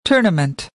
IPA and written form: ˈtʊə.nə.mənt (Tournament)